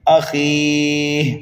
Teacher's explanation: من اخیہ، اس ہا کو ہم کر دیں گے ساکن، یہاں پر ہوگا وقف بالاسکان، لیکن یہاں پر مدہ عارض بھی پایا جا رہا ہے اس لیے ہم خا کو کھینچ رہے ہیں